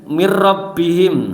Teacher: Idgham bilahuna karena idgham bilahuna ada 2, lam dan ra ya. Jadi cara membacanya masuk kepada huruf selanjutnya. Jadi minnya tidak kebaca. Jadi mir langsung mir.